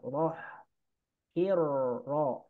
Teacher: Nah, kemudian rohnya ini, roh ini dibaca tebal. Rohnya dibaca tebal, hukumnya tafkhim.